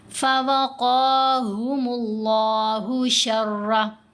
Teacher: را کے اوپر زبر ہے، را کو موٹا پڑھیں گے